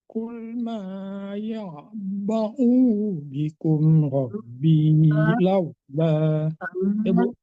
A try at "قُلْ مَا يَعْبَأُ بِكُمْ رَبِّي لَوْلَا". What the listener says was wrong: Baunya tidak panjang ya Pak. alif itu tidak berpengaruh untuk harakat dhammah ya. Alif itu untuk memanjangkan fathah baris di atas gitu ya.